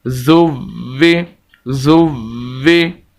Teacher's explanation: واو 2 مرتبہ پڑھا جائے گا اور سخت کر کے پڑھا جائے گا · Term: واو مشدد